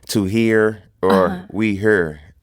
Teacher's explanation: it's like turn the E into a U a little bit